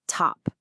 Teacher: The T is right at the beginning of a stressed syllable, so it gets that puff of air.